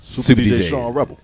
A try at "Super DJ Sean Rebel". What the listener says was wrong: No, man, that's too fast.